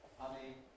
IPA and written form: ˈhʌni (honey)